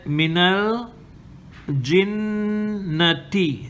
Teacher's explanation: the noon here is mushaddada, so you got to hold it for 2 counts. Minal, the lam here is sakin, it got to be assimilated or joined to the noon with the fatha and the alif here becomes silent.